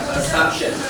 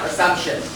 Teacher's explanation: The stress on the second syllable.